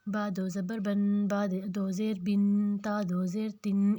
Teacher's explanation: نون نظر تو نہیں آتا لیکن نون کی آواز آتی ہے۔ اس میں پہلا لفظ تو اس کا اپنا زبر کا ہوتا ہے، دوسرا لفظ نون ساکن کا ہوتا ہے، دوسرا زبر نون ساکن کا ہوتا ہے، اس کو ہم تنوین کہتے ہیں۔